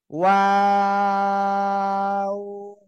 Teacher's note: দুই ঠোঁট গোল, শুরুতেও গোল হবে, শেষেও গোল হবে। এই যে এভাবে গোল, আবার কি মাঝখানে দুই দিকে প্রসারিত হবে, আবার শেষে এসে গোল।